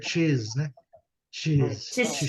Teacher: Você vai ler como se tivesse um T antes.